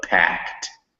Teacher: when you have a word that begins with a p like packed you want to make sure it has a little puff of air